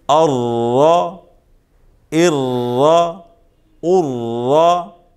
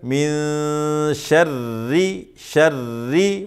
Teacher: را مشدد ہے، اس پر زبر پیش ہے تو را کو موٹا پڑھیں گے، اس کے نیچے زیر ہو تو را کو باریک پڑھیں گے۔